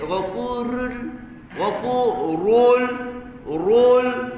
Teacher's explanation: Ru tafkhim tebal, jangan nipis. Ghafurul, rul tebalkan ra.